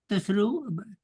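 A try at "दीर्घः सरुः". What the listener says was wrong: No. You have to pronounce the dirga. You have to pronounce the visarga after the dirga. Get saru, you pronounce saru, but dirgahat saruhu. You can't make it dirgas saruhu.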